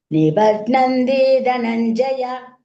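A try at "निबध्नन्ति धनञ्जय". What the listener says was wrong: Nibadnanti. அங்க கொஞ்சம் இழுத்தல்னா அப்ப கொஞ்சம் அது தீர்க்கா மாதிரி தெரியுது. சரியா? Nibadnanti Dhananjaya.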